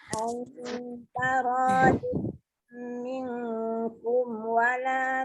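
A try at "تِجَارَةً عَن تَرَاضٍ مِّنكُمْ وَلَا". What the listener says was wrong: Masuk sikit lagi ain tu. Tekan.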